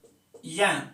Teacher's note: इसका उच्चारण स्थान तालु तो है ही, प्लस में क्या हो रहा है? नासिका। ठीक है, तालु प्लस नासिका ये है।